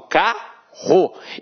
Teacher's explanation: esses dois rs aqui possuem um som de um R forte quando só acontece na língua portuguesa a gente chama esse processo